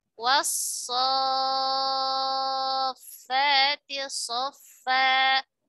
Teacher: Di situ ada lam ta'rif, ya, dalam ta'rif bertemu dengan huruf sad, ya, bertemu dengan huruf sad. Nah, lam dan sad dia berdekatan makhrajnya, ya, sama-sama dari lidah, dari ujung lidah · meleburnya huruf lam ta'rif sempurna ke huruf shad, menjadi hilang huruf lamnya, ya, hilang huruf lamnya. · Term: idgham sempurna